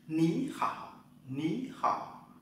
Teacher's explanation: Khi mà hai chữ V như nhau, chữ V thứ nhất đọc thành dấu sắc nhé. Ní khỏ ní khỏ.